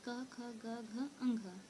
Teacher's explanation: जब हम इसका उच्चारण करते हैं तो इसका उच्चारण कंठ से होता है। ठीक है, कंठ, अगर आप इसका उच्चारण करेंगे तो ये कंठ से आवाज़ निकलेगा।